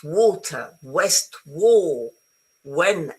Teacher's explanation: So remember, W, it's a U sound, not a V sound, okay?